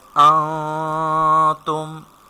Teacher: that is ikhfa, so we have to do ghunna here.